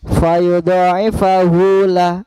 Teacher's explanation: Ini mad silah qasira, kemudian yang keduanya lahu ini baru mad silah tawilah panjangnya 4 harokat atau 2 alif